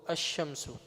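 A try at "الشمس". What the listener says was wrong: Why you don't say al-Shamsu? You added an alif lam both. But you said only Hamza. You didn't say the lam, okay? So Asham. And you will remove the tanween. Because alif lam and tanween, they are rivals.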